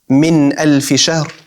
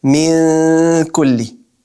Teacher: You're not putting your tongue fully on the makhraj of the noon, but it's kind of a hidden noon sound. All right? But there's still ghunna in it. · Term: noon with ikhfa